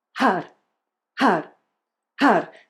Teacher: Really pronouncing that R like an L or a D Flicking the tongue up against the upper pallet Har Har Har The eyes remain open